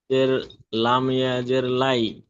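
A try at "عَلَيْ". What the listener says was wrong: জের নই, জাবার আছে, লাম ইয়া জাবার লাই।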